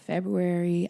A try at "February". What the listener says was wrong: Better pronounce all those syllables, girl.